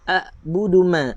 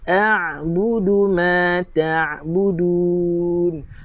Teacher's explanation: Kita tekan sikit makhraj Ain. Jangan samakan dia dengan Hamzah.